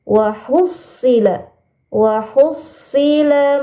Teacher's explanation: ada huruf shad bertasydidnya ada 2. Maka dimasukkan atau ditekan ya.